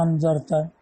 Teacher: بتخفیف الثانیۃ بین بین وقلبها الفن، اور دوسرے حمزہ کی تخفیف بین بین یعنی حمزہ کو حمزہ اور الف کے مخرج کے درمیان پڑھنا، تب ہو جائے گا انذرتا۔